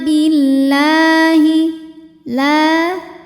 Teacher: ananna Billahi La kalau tidak berhenti lam ini hukumnya Mad thii karena ada baris fathah panjang di atas huruf lam dibacanya hanya boleh dua harakat saja